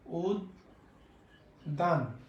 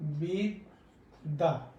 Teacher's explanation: শব্দের মাঝে এবং শব্দের শেষে যদি জ ফলা থাকে, তাহলে তার উচ্চারণ হবে দ্বিত্ব, মানে দুইবার উচ্চারণ হবে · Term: উচ্চারণ দ্বিত্ব